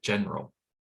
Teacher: stress on the first syllable that second syllable may be reduced to the point where it disappears